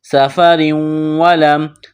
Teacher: سفر ولم، سین میں سیٹی کی آواز پیدا کریں گے، سین کو باریک کرنا ہے۔ را کے نیچے دو زیر تنوین ہے، تو را کو باریک کرنا ہے۔ تنوین کے بعد واو مشدد ہے، واو کے اوپر تشدید ہے، تو را کو واو کے ساتھ پلس کریں گے، ملائیں گے۔